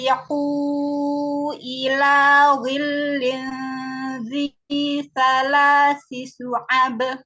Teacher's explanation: Z-nya panjang ya, 2 harokat.